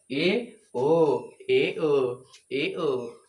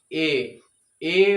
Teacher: ए और ओ जो है अर्ध संवृत स्वर है क्योंकि इसमें संवृत स्वर के अपेक्षा जो है ना थोड़ा अधिक मुह खुलेगा और अधिक मुह खुलेगा यानी आधे से कम खुलेगा ठीक है